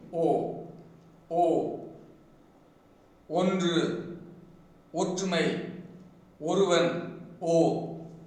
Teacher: When the Tamil phoneme O is produced the lips are closely rounded.